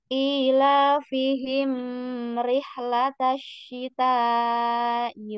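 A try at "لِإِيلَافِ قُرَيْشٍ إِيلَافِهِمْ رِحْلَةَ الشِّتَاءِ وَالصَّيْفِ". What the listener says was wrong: Kepanjangan. kepanjangan. Mimnya terlalu panjang. Jangan terlalu panjang. Ila fihim rihlatasyita.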